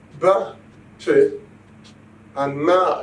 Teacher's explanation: If I say ba, che, and ma, you will find that the two lips are needed to produce these sounds. We call these sounds bilabial.